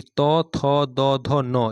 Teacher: इन वर्णों का उच्चारण स्थान दांत है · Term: त वर्ग